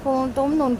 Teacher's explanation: نون ساکن کے بعد تا ہے، باریک اخفا